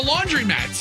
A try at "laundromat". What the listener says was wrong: Hold on, are you saying laundry mats? It's a laundromat. It's not a laundry... You don't say laundry mat. It's a laundromat. No, it's a laundromat, not laundry mat. but you call it a laundromat.